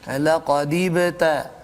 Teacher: huruf ba itu sukun di tengah kalimah ketika wasal, maka dibaca dengan qalqalah surah